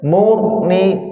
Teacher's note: Takrir terulang-ulang getarannya, tapi jangan banyak-banyak ya.